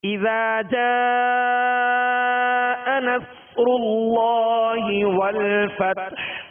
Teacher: اور آگے نصر اللہ، صاد پر جزم ہے، صاد ساکن ہے، لہذا اس کی آواز ہلے گی نہیں. صاد کو پر پڑھنا ہے، سیٹی کی آواز میں پڑھنا ہے. را پر پیش ہے، لہذا را کو پر کریں گے.